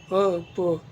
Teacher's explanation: बिना दोनों होठ को मिलाए आप लोग इनका उच्चारण कर ही नहीं सकते हैं, असंभव है बिल्कुल। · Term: ओष्ठ